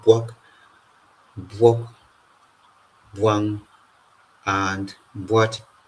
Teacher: labialized form of the ba plosive sound